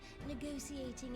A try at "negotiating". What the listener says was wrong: I think you pronounced negotiating wrong. That's a T, not an S.